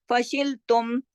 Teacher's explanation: تو یہاں پر ہم پورے اظہار کے ساتھ فشل تم ایسے پڑھیں گے, ادھر کوئی غنہ نہیں ہوگا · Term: اظہار شفوی